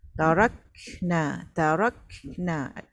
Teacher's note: Jadinya kita macam banyak ada dua benda nak fokus lah selain daripada kaf kan angin tu. Angin pada kaf dan kita nak dengungkan huruf nun.